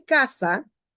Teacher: la mayor fuerza de voz está en la primera sílaba